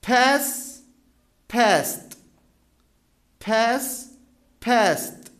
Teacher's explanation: الايدي برضو منطوقه ت because قبلها الصوت س